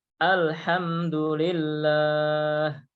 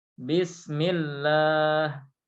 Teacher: ini lafadz Allah dibaca tipis karena sebelumnya ada harokat kasrah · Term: bacaan tipis